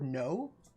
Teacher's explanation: the way that Australians not all Australians but like some Australians will say the word no and it's got like four syllables